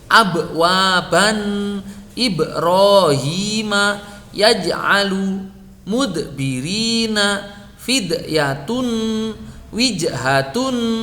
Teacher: Ada suara qalqalah pantulan tetapi tetap dibaca tipis.